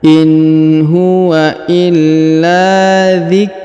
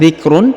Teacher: Alif inua illa diikrul perhatikan huruf Zik huruf Kaf sukun zikrul tanwin UN bertemu lam bertasdid maka tanwin unnya menghilang melebur ke huruf lam di sini ya yang bertasdid ditahan dan ditekan dua harakat contohnya